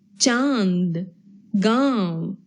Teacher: यह शिरोरेखा के ऊपर बिंदु के रूप में लगाया जाता है। अनुनासिक, इसका उच्चारण नाक और गले दोनों से होता है।